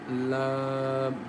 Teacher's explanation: Lam comes from the tip of the tongue as la.